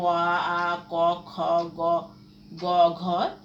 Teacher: এই বর্ণগুলোর উচ্চারণের স্থান হচ্ছে কণ্ঠ বা জিহ্বা